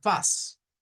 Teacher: con esa A que decíamos que se parece a la del español, pero un poco más atrás, un poco más recogida, no tan hacia el frente.